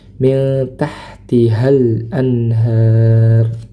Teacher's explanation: Nah di sini nun sukun dibaca samar karena bertemu dengan huruf ta